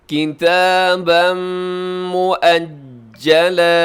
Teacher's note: کتاباً مؤجلا، لکھا ہوا ہے مؤجلاً لیکن وقف کریں گے، ہاں رموز اوقاف میں سے تو ہے مؤجلا، جیم کے اوپر تشدید ہے، تھوڑا سا رک کے اس کو ادا کریں گے مضبوطی کے ساتھ